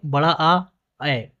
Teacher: विवृत का अर्थ होता है पूरी तरह खुला हुआ। अर्थात इनके बोलते समय मुंह पूरी तरह खुलता है।